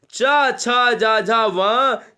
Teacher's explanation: जब आप तालु की बात करेंगे तो ये चा वर्ग, चा छा जा झा वां, ये तालब्य कहलाते, ये तालब्य स्पर्श व्यंजन हो गए।